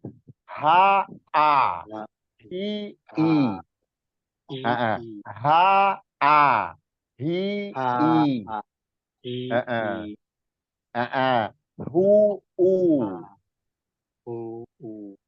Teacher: Yang pertama huruf yang berasal dari bawah, tenggorokan paling bawah itu H dan Hamzah.